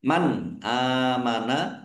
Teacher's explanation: Nun sukun bertemu dengan huruf alif. Bacaan izhar dibaca jelas. Alif fathah berdiri.